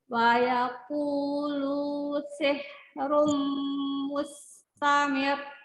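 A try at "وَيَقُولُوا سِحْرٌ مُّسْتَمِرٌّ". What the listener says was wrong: Ya, sih turun kan? Sih bukan seh. Ya, sih ya, turunkan bibir dan rahu ya sihnya, bukan seh. Ya, kasrohnya kurang sempurna, kurang menurunkan bibir dan rahang bawahnya. Jadi karena dia siap-siap mau sukun h itu jadi mungkin seh gitu kan. Jadi ujung kedua bibirnya yang ditarik bukan diturunkan bibir bawah gitu. Harusnya tetap menurunkan bibir dan rahang bawahnya. Sih. Nanti balik ke normal h-nya.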